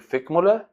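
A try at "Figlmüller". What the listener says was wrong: Figelmüller. Figelmüller. Ficht is something else.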